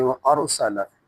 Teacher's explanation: یہاں را موٹا کریں گے چونکہ را ساکن ہے تو اس کا ماقبل زبر ہے، الف کے اوپر اسے حمزہ کہیں گے، تو را ساکن ہو تو ماقبل کے اوپر اگر زبر ہو پیش ہو تو را کو موٹا کرتے ہیں۔